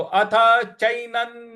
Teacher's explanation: न पर जो अनुस्वार है उसका उच्चारण हमें न ले आना है